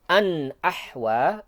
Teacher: annya dibaca jelas, idhar, tapi tidak cepat-cepat ya. Harus dibaca jelas tapi tidak cepat-cepat pindah ke ahwa.